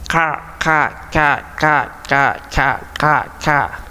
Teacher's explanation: Langit mulut bagian tengah kalau ka. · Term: huruf kaf